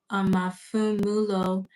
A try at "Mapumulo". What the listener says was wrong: It's Mapumulo. So no, that P you actually pronounce it as a P. You don't F it. You don't F it. Normally we say P is a PH, but you don't do that. Like a P, like an F is a PH, right?